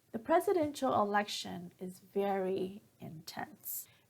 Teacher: at the end when I say intense my pitch goes down to finish the sentence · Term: falling intonation